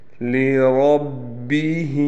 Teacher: لام باریک پڑھا جائے گا، را کو ہم نے موٹا پڑھنا ہے، یعنی پر کر کے پڑھنا ہے۔ ہا کے نیچے کڑی زیر ہے، لہٰذا اس کو ایک الف کے برابر کھینچ کر پڑھیں گے۔